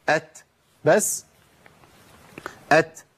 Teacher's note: اتدرب ان انا اطلع الهمس مع صوت التاء